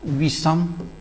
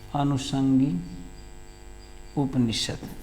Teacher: सूत्रवा कहा, यदि प्रथम पद में आया हुआ कोई शब्द उसके अंतिम वर्ण में ह्रस्व ई हो या ह्रस्व ऊ हो, दूसरे पद का प्रारंभ दंत स से हुआ हो, तो संधि करते समय दंत स को मूर्धन्य स में बदल देते हैं।